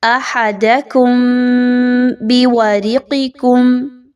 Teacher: میم ساکن کے بعد با کا حرف آ رہا ہے، یہاں پر آواز کو تھوڑی دیر کے لیے غنہ کرتے ہوئے پڑھیے اور غنہ کے بغیر نہیں پڑھنا۔